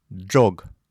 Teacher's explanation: «Ж» с двумя точками «дж» произносятся как слитно произнесенные «д» и «ж». «Дж».